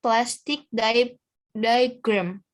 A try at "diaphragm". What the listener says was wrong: Diaphragma salah, bukan diagram. Diaphragma di sini.